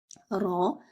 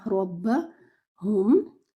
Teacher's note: Your ra should be heavy, ra, and your ra should join with the ba.